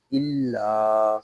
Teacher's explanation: لام کو ہم ایک الف تک کھینچ کر پڑھیں گے۔ اس کو الا اس طرح نہیں پڑھیں گے، اس کو پڑھیں گے الا۔ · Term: الف مدہ